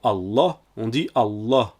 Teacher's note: il s'agit d'appuyer la prononciation comme si la lettre était écrite deux fois j'ai donc doublé ces lettres par exemple pour Allah on dit